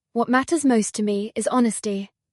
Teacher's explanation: Notice how we stress matters most and honesty.